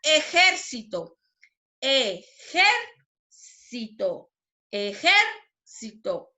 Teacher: es una palabra esdrújula y lleva la sílaba tónica en la antepenúltima sílaba · ¿Dónde lleva la mayor fuerza de voz? En la sílaba ger.